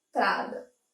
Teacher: Esse N é como se ele se juntasse à vogal anterior, que faz parte da mesma sílaba. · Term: dígrafo